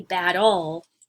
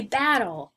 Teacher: When you say battle, the emphasis is on the first syllable of the word.